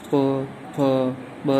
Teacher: केवल होठ का इस्तेमाल हो रहा है, इसमें हवा बाहर आ रही है गले से, लेकिन होठ का इस्तेमाल हो रहा है। और होठ ऐसे मतलब गोल टाइप हो रहे हैं। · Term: ओष्ठ्य वर्ण